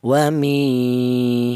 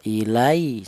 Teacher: Kalau lin fathah, kalau matobi'i kasroh. Kalau matobi'i dipanjangkan yaitu 2 ketukan wami seperti itu. Kalau yang lin cukup lunak saja